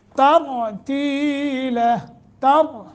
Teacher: तरतीला, तर, रा को मोटा करेंगे। रा साकिन माक़बल फ़तह है और उस फ़तह की वजह से रा मोटा हो रहा है।